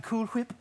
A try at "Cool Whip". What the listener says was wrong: Why are you saying it like that? Oh, you're saying Cool Whip. You're putting a lot of emphasis on the H.